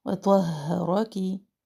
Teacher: کڑی حرکت الف مد کے قائم مقام، کاف کے نیچے زیر، کاف کی زیر کو لمبی نہ کرے